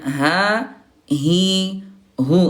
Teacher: Huruf H di sini nih, Bunda. Di pangkal tenggorokan di sini nih, ya. Huruf H. Coba Bunda tekan di sini ya, pakai jari.